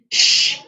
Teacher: shh is a voiceless sound why is it a voiceless sound it is because during its production there is no vibration in the vocal tract